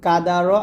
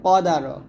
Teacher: দেখুন কাফটা হালকা হবে আর কফটা মোটা হবে।